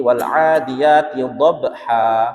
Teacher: dhabha hanya panjang satu alif atau dua harokat, jangan sampai lebih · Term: mat iwad